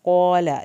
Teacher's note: क़ाफ को पुर करना है। क़ाल, लाम की ज़बर को लंबा नहीं करना।